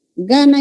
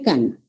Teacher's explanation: Aquí tienen de similaridad en que son velares. Velares. Ya. Son oclusivas también. Y la diferencia está en que una es sonora y la otra es sorda.